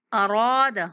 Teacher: را کے بعد الف مدہ ہے، را کو کھینچنا ہے